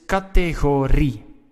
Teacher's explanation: You hear the stress, it's on ri. It's the last part of the word.